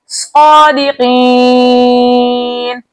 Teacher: یا مدہ کو 2 حرکت کی مقدار کھینچ کر پڑھتے، لیکن آگے نون کا سکون عارضی وقت کی صورت میں آ رہا ہے، اس لیے یہاں پر مد بنے گی مد عارض وقتی جس کی مقدار 2 4 6 حرکت ہے، لیکن 6 حرکت کی مقدار کھینچ کر پڑھنا زیادہ بہتر ہے